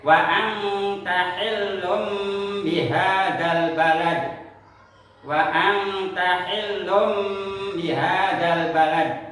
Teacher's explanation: nun sukun atau tanwin bertemu dengan huruf ba dan dibaca dengan berdengung. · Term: iklab